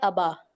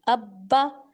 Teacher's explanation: جب میں نے دو با ادا کیے تو میں نے با کو زور دے کے پڑھا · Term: تشدید